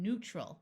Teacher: Note that the AL at the end of a word often sounds more like ul.